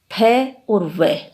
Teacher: दंतोष्ठे फ और व दोनों ग्रहित हैं। फ और व व्यंजन ऊपर के दांत एवं नीचे के होठ के मिलने से उच्चारित होते हैं।